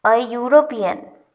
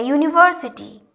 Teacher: Although E is a vowel, but it sounds as YU.